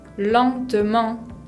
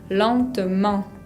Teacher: no se pronuncia la T final y tenemos una nasal, la E con N, la combinación.